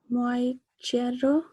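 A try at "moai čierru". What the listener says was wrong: Yes, and then the E here, because we got this O here, then the E diphthong is changed into a long E sound, I sound. So it becomes moi chirro. Yes, moi chirro. I should try to say that R better. Moi chirro.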